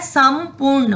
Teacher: वो अनुस्वार जो है, जो डॉट है, उसका उच्चारण किस तरह होगा, म की तरह।